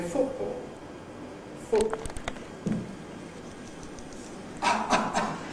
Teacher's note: In my own speech, you will hear plenty of glottal stops for / t /, but you probably won't hear them, that is, they're in positions where they're not very salient, but I would normally say ‘football’ [ ˈfʊʔbɔːl ], [ ˈfʊʔ ʔ ʔ ʔ ].